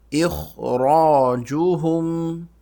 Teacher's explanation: حمزہ باریک خوا موٹا، اخ را بھی موٹا